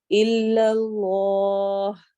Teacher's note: اللہ والے لام کو ہم موٹا کر کے پڑھیں گے تفخیم کے ساتھ